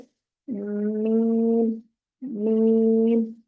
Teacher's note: ब, ब स्माइल वाले अंदाज में लेकर जाएंगे। ब, मीम होंठों के अंदरूनी खुश्क हिस्सों को आपस में मिलाकर अलग करने से मीम, मीम अदा होगा।